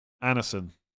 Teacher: D is mute after N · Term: soft D